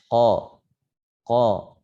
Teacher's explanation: huruf qaf dia sifatnya tempat keluarnya dari lidah bagian belakang menempel atau bertemu dengan langit-langit lunak · bagian lidah yang paling pertama adalah ketemu makhraj qaf dan dia bertemu dengan langit-langit yang lunak. Ya, dirasakan di belakang itu langit-langit yang paling belakang itu lunak.